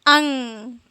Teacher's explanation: इसमें न निकल रहा है ना अन ना तो यह हमारा इसका उच्चारण स्थान नाक होता है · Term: अनुस्वार